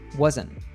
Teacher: the combination of the letters NT and wasn't often gets reduced by dropping the T sound